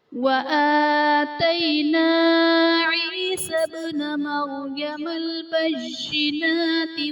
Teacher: با حرف قلقلہ ساکن ہے، تو یہاں پر قلقلہ خوب ظاہر کریں گے